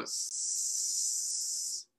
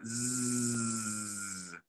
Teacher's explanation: feel anything then i want you to go z and feel as you do z you should feel vibration that is voicing